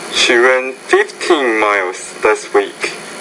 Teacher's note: put a little bit more stress and rising pitch in the word 15